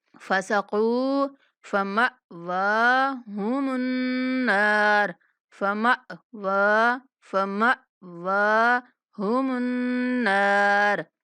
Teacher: واو کو کھینچیں گے اور اس کے بعد میم کو جب نون کے ساتھ ملانا ہے تو نون مشدد ہے، نون پر ہم نے غنہ کے ساتھ نون کو کھینچنا ہے